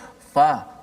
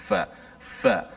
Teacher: Fa makhrajnya di bibir kita. Gigi kacip menekan perut bibir. Batnus syafah. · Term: makhraj fa